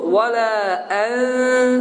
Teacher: ixfa zamanı isə dil məxrəcə dəymir. Havada qalır və oxunur vələ ən.